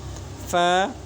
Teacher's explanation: 14 নম্বর মাকরাস নিচের ঠোঁটের পেট সামনের উপরের 2 দাঁতের আগার সঙ্গে লাগাইয়া ফা উচ্চারণ হয়।